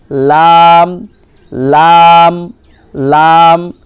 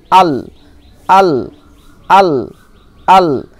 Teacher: জিভের আগা উপরের সামনের দাঁতের 2 দাঁতের গোড়ায় লাগাবেন, দিয়ে বলবেন লাম লাম লাম।